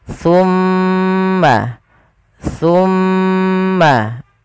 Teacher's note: ujung lidah kita menempel dengan Gigi dari atas dan jangan sampai huruf Ta di sini diganti dengan huruf Sin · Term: huruf tsa